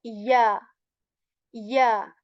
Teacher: whenever the mid part of your tongue, it is raised towards the palate. That is how we articulate ya.